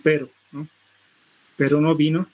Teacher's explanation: líquido vibrante simple, que nos indica que estos articuladores entran en contacto una única vez